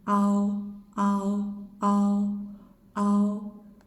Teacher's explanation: it's bigger than O, halfway between A and O.